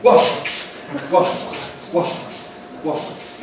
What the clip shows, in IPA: wɒsps